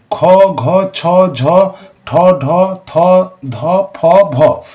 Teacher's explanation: মহাপ্রাণ ধ্বনি হচ্ছে যে ধ্বনিগুলো উচ্চারণের সময় শ্বাসবায়ু বেশি লাগে তাদের বলে মহাপ্রাণ ধ্বনি